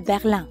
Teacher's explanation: berlin ends in i n which in french becomes uh another nasal sound